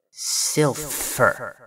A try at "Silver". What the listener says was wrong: No, you're putting the emphasis on the end, and that's wrong. Yes, kind of like silver, like the metal, but not quite.